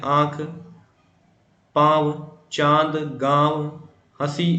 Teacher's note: जो हवा होगी वह नाक और मुंह के रास्ते दोनों तरफ से निकलेगी, इसलिए इसे अनुनासिक कहा जाता है।